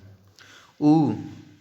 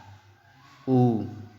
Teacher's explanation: ऊ, जैसे ऊ जब आप बोलेंगे तो आपका ओंठ देखिए कैसे हो जा रहा है, ऊ, गोला हो जा रहा है ना, तो इसका उच्चारण हमारा ओष्ठ से हो गया। बिना आप होंठ को गोल किए आप बोल ही नहीं पाएंगे ऊ, ठीक है, वो अ हो जाएगा।